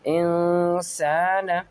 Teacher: الف سے پہلے زبر ہے تو الف مدہ کا قاعدہ لگے گا، یہاں پر اسے ایک الف کی مقدار کھینچ کر پڑھیں گے